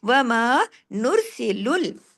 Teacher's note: वमा नुरसिलुल, रा यहाँ हैवी होगा पेश के असर की वजह से, बाकी तमाम बारीक हुरूफ हैं